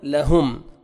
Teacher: میم ساکن کا اظہار ہے، جلدی پڑھیں گے، یہاں پہ اخفا نہیں کرنا